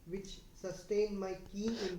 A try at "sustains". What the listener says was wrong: సస్టైన్స్. ఎస్ ఉంది అక్కడ. ఎస్ నువ్వు చదవలే.